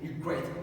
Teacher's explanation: The second syllable is stressed